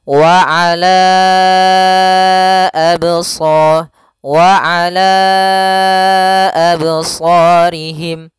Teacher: kita panjangkan dulu lanya sepanjang empat harakat baru dibaca a.